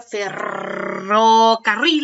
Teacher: coloque la lengua cuando la pronuncia y así la imitan recuerden para emitir este sonido mi lengua tiene que estar pegada en el paladar y debe vibrar nuestra boca vibra mire usted mismo haga lo conmigo e incluso